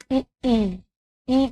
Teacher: इ का स्थान होगा तालु